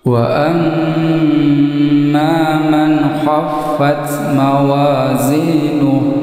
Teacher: Wa amma di sini ada mim tasjid dibaca gunnah panjang 2 harakat. Ini mim tasjid dibaca jelas disertai dengung panjang 2 harakat.